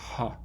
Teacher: an h in english you're making a bit of turbulence here you're bringing the vocal folds close enough so that when you pump a lot of air out of your lungs um there's some frication or turbulence that happens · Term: glottal